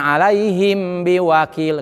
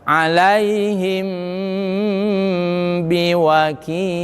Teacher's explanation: Nah ini, nah, karena keluaran dari bibir. Ikhfa sapawi dalam hukuman mim sukun adalah termasuk gunah aridiyah yang harus dibaca ditahan, ada dengung di situ.